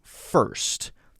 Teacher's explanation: but it's still still there there's still a simple R sound Americans will say ah-ah-ah and then go directly to the S sound